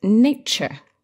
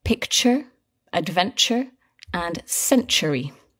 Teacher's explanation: all these words have that same sound where the T becomes a little bit like a CH sound